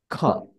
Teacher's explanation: দে আর strongly aspirated, যেগুলো হচ্ছে অনেক বেশি অ্যাসপাইরেটেড হতে হয় এবং সাউন্ড মানে বেশি বেশি বাতাস বের করতে হয়।